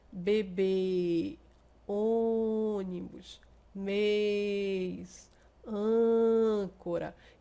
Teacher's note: Quando o acento agudo, o timbre é aberto, boca abre um pouquinho mais, acento circunflexo, timbre fechado, a boca fecha um pouco mais para poder sair o som dessas vogais tônicas · Olha aqui o exemplo: bebê, ônibus, mês, âncora. Então, esse timbre dessas vogais fica mais fechado. A nossa próprios lábios, ele fecha um pouquinho mais para poder pronunciar, tá?